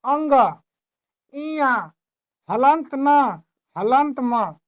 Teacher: अंग, इया, हलंत न, हलंत म, इनका उच्चारण करने में नाक का भी प्रयोग होता है। बिना नाक के प्रयोग से इनका उच्चारण संभव नहीं है।